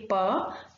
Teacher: when we say per the vocal cords are far away from each other they don't vibrate so this sound is voiceless